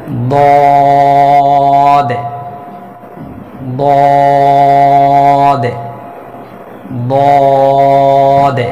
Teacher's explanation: যেমন বলবে যে দদ জিহ্বার, অর্থাৎ জিহ্বার গোড়ার কিনারা উপরে মাড়ির দাঁতের গোড়ার সঙ্গে লাগিয়ে 4 আলিফ পরিমাণ টেনে উচ্চারণ করতে হবে মোটা আওয়াজে।